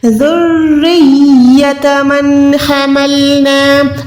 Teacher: اب یہاں پر میں نون ساکن کو نہیں چھپا رہی کیونکہ اس کے بعد ہا ہے. نون ساکن کے بعد ہا آئے گا تو وہ حروف حلقی میں سے ہے.